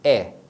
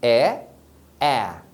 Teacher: A letra E vai ter um som mais igual o nosso, né? Então um pouco mais fechado. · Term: som curto da letra E